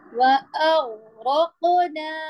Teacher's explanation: صرف قاف کو ہلائیں گے کیونکہ یہ حروف قلقلہ ہیں